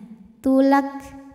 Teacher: jadi setelah huruf k ada anginnya